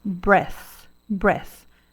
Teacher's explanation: esse F aqui ele é feito com a língua né e não com o Lábio